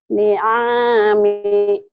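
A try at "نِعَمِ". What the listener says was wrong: Pendek. Pendek nih.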